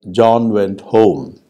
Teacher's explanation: a look at a sentence such as John went home now John went home has three degrees of stress their strongest is on the last word and then this next is on John and the weakest stress